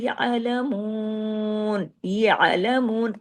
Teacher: ऐन की आवाज आपके गले में आना चाहिए